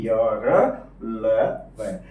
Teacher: है वो अंतस्थ वर्ण होता है इनकी संख्या चार होती है इनमें जब उच्चारण करते हैं तो स्वर और व्यंजनों के बीच में उच्चारण होता है